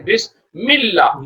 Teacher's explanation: میم جو ہے جا کے لام میں مل جاتا ہے اور حمزہ کو ڈراپ کر دیا جاتا ہے